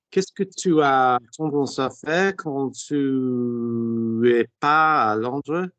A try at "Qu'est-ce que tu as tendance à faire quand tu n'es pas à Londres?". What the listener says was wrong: Nice.